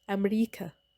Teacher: Consider the English word America, which, when borrowed into Egyptian Arabic, it often becomes America, with a glottal stop sound added at the beginning. This change helps the word align with Arabic's phonotactic rules, because the Arabic system does not normally allow words to begin with a vowel.